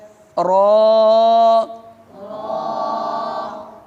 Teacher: یہ زبان کی نوک اور مقابل کے تالو سے ادا ہوتا ہے